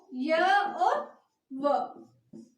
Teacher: उच्चारण के समय वायु बिना संघर्ष के बाहर निकलती है। मतलब उच्चारण के समय वायु बिना संघर्ष के बाहर निकलती है तो हीन यानी होता है बिना, मतलब बिना संघर्ष से बाहर निकलती है तो संघर्षहीन व्यंजन कहते हैं या अर्धस्वर।